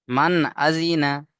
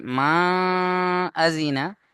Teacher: তাহলে নুন সাকিনকে এখানে গুণনা করা যাবে না। নুন সাকিনকে গুণনা করা যাবে না, অর্থাৎ নাকের মধ্যে আওয়াজকে তোলা যাবে না, বিনা গুণনায় পড়তে হবে।